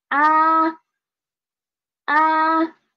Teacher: first is flat and second is rising up and the third is drop down and rise up again and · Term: first tone